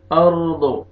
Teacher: را کو پر کریں گے، را ساکن ہے اس سے پہلے زبر ہے